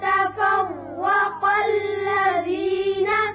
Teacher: وما تفرق الذين. تفرع را پر ہوگا اوپر زبر ہے، قاف بھی پر پڑھیں